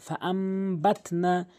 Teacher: ছোট মিম দ্বারা নুন সাকিনকে পরিবর্তন করছি এবং গুণনা করে পড়ছি। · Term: ইকলাবের নিয়ম